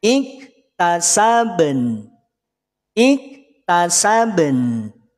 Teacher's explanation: Setelah qalqalahnya selesai masuk pada nun dalam kondisi sukun.